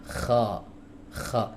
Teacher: huruf kha keluar dari tenggorokan bagian atas disertai hams ya. Kalau nggak disertai hams jadi huruf ghain ya, jadi harus ada hamsnya.